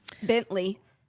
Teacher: Bentley, you're accenting the first syllable.